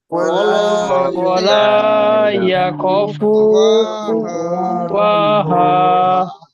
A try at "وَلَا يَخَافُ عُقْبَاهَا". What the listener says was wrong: খটা টান হচ্ছে না খ আলিফটা কয়েকজনের টান হচ্ছে না ওয়ালা ইয়াখাফু